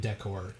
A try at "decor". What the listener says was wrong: You say decor. You just put the emphasis on the other The other.